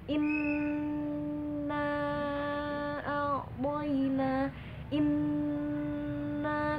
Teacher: membaca gunna itu 2 kali lipat dari tasydid, jadi harus lebih tebal. Inna a'boina, inna, tuh lebih tebal, nggak cuma inna, beda ya. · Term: gunnah musyaddadah